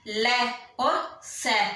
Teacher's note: ल और स में जो आवाज निकलती है दंत से, बोलते हैं ना ल और स, तो जीभ है वो दांतों से टच होती है।